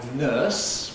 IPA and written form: nɜːs (nurse)